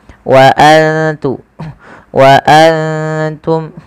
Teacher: Kita baca dengan bacaan ikhfa, yaitu cara membacanya menyamarkan suara nunnya kepada huruf ta. Wa antum, ya seperti itu.